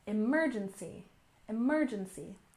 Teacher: emergency with a stress on the second syllable